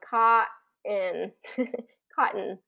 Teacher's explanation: you're not really getting that t sound in there you're not releasing that t sound you're really just kind of going caught and cotton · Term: glottal stop